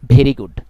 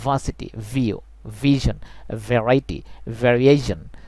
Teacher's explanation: উপরের দাঁত নিচে ঠোঁট অর্থাৎ সঠিক মাখরাজ থেকে উচ্চারণ করি